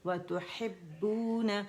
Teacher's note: آواز 1 کاؤنٹ کے لیے نیچے جائے گی اور با مشدد ہے